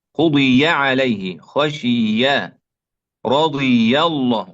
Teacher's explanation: Berikutnya adalah kita harus memperhatikan ketika huruf ya itu berada di kalimat yang sulasi ya, 3 huruf ya, dan sebelumnya kasroh ya, sebelumnya kasroh. Jadi ya-nya yang perlu diperhatikan adalah harokatnya, jangan sampai menjadi sukun ya